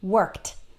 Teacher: So we don't say worked, we say worked, worked. Notice that the ED just sounds like T, worked.